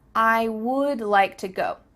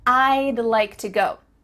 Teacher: we're cutting off all the sounds in the word wood except for that final D